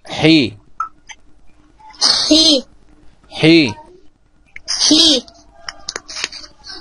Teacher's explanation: حرف الحاء يخرج من وسط الحلق